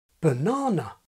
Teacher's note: there are speakers who pronounce 'banana' with the vowel of 'book' in the first syllable and the vowel of 'nut' in the final syllable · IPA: /bɵˈnɑːnʌ/